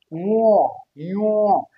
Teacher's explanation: আমাদের এই নাক দিয়ে বায়ু প্রবাহটা আমরা বেশি করি, এই জন্য এর নাম হচ্ছে যে নাসিক্য ধ্বনি